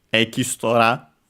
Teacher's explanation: technically we would have two vowels, barely heard if at all, ki and su